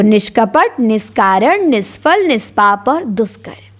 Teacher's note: यदि विसर्ग के पहले इकार या उकार आए और विसर्ग के बाद का वर्ण क, ख, प, फ हो तो विसर्ग का मूर्धन्य स हो जाता है